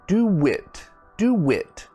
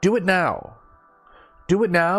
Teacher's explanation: we add like a w sound